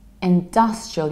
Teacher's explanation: you stress dust like dust, industrial, and I also reduce the ending